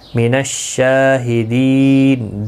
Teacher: مد العارض وقفی ہوگا، 3 سے 5 الف کی مقدار یا 3 سے 5 سیکنڈ کی مقدار کے برابر کھینچ کر وقف کریں گے